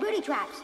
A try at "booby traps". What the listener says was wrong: It sounded like you said booty traps.